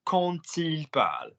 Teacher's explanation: That is Q-U-A-N-T. But you will pronounce quand with a T sound. Stay with the D writing if you have a vowel after it.